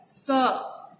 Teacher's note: स का उच्चारण करते समय हमारा जीभ जो है वो दंत मूल से टकराता है